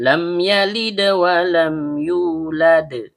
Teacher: Kemudian lam ujung lidah bertemu dengan langit-langit bagian depan. Dal ujung lidah bertemu dengan pangkal gigi seri atas. Karena dalnya sukun maka terjadi hukum bacaan qalqalah. · Lam ujung lidah bertemu dengan langit-langit bagian depan. Mim huruf bibir. · Karena mimnya sukun bertemu dengan huruf ya yang keluar dari tengah lidah naik memantul ke langit langit. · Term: izhar syafawi